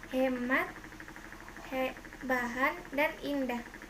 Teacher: Konsonan H, kriterianya ralingal, geseran bersuara. Contoh kata hemat, bahan, dan indah.